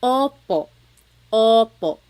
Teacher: Sometimes I think of it like having a ball in your mouth. Your tongue gets kind of pushed back and down a little bit and the inside of your mouth is open and wide. So Oo, like OPO. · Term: letter O